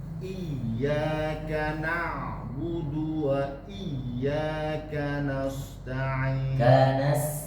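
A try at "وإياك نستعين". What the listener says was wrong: Bukan nas. Kanasta'in. sama, nunnya juga lebih harus terlihat lebih jelas. Kanasta'in.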